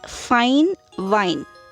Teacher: labiodental in this type the lower lip is active articulator and the upper front teeth are the passive articulators for example in english the initial sounds of the words fine